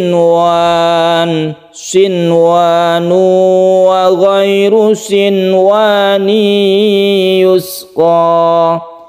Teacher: Itu hanya ada 4 saja yang membacanya itu dibaca idhar wajib, namanya idhar wajib atau idhar mutlak. Cara membacanya nunnya dibaca jelas dan tidak berdengung. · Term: izhar wajib